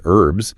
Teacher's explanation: Brits tend to elide it, they drop the H entirely